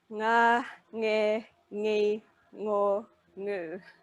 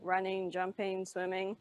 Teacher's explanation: The difference is in Māori it's the start of the syllable, in English it's always the end of the syllable.